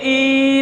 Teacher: पिंकी बोलोगे तो लास्ट में ई की ध्वनि आएगी, लेकिन ई बोलते समय लंबी आवाज में तीन मात्राओं जितना समय लगना चाहिए, 1 2 3। पिंकी ई बोलेंगे, ई तो उसमें ई को लंबा ले जाएंगे, पिंकी ई को जो है लंबा ले जाया जाता है, इसलिए इनको त्रैमात्रिक स्वर कहा जाता है, प्लुत स्वर कहा जाता है।